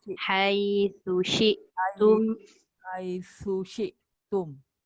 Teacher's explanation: Tum tu tak dengung sebab dia ada tanda mati.